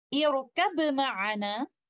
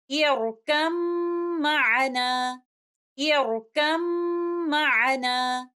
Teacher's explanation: Instead of reciting letter ba and saying it like this, irkab ma'ana, we'll go straight away to letter meme, and we will give a most complete gunna here, which of course is coming from letter meme. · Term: idgham kamil